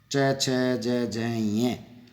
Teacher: च वर्ग जो है वो तालु है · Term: तालव्य